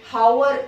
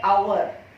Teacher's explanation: Because here the sound of alphabet H is silent.